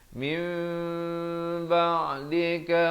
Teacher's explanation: iqlab ni maksudnya kita menukarkan daripada bunyi nun kepada bunyi mim. Daripada min jadi mim, 2 harakat, jangan lupa.